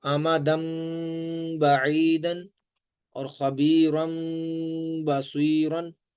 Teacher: تنوین کے بعد اگر با آ جائے یا نون ساکن کے بعد با آ جائے تو ان کی آوازوں کو میم سے بدل دیتے ہیں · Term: اقلاب